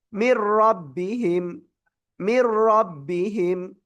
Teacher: মির বেলা গুন্না, গুন্না ছাড়া মিলিয়ে পড়তে হবে। মির কোনো গুন্না নাই, রবাজ রব বাজের বি হা মিম জের হিম, মির রব্বিহিম, মির রব্বিহিম।